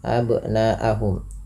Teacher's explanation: Nanya awalnya 2 harokat karena datang hamzah pada setelah huruf mad, atau apabila ada mad tabi'i bertemu dengan hamzah pada satu kata, ini pada lafal kata abna'ahum hamzahnya, maka dinamakan mad wajib muttasil dipanjangkan 4 harokat